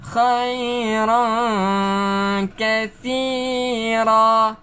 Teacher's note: Ikhfa bacaannya lidah di tengah-tengah, tergantung. Tak kena lelangit. Bukan khairan, tetapi khairan.